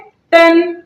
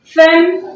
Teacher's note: तनवीन के आखिर में नून साकिन की आवाज आती है, इसलिए इसको गुन्ना असली के साथ पढ़ते हैं